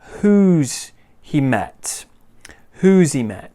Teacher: we can just get rid of that wuz and just say something a bit more like who's he met